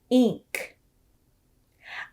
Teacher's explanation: i pulled the corners of my lips back the sides of my tongue touched my teeth and the sound came from the back of my throat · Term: ink sound